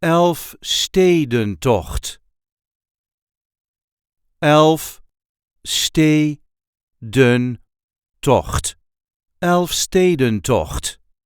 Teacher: There is a light emphasis on the second syllable